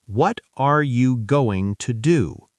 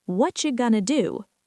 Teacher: What are you becomes whatcha. Going to becomes gonna. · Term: fast, natural English